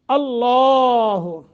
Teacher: لفظ اللہ کو تفخیم منہ بھر کر پڑھیں گے